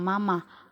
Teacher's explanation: vokal a Tengah atas pusat tak bundar